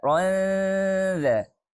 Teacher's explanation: ikhfa hakiki ini mempunyai sifat gunnah juga ya, dengung, dan itu panjangnya 2 harokat.